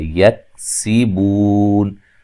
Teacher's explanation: سین کو باریک سیٹی سے ادا کرنا ہے